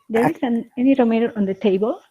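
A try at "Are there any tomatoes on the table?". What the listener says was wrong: So if you need to change the tone as a higher intonation, a higher tone. Intonation, higher intonation. It should be going up.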